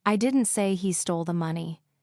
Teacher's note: the stress is on I, meaning maybe someone else said it